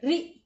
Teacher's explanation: ये है ऋ र पर छोटी इ की मात्रा जल्दी बोल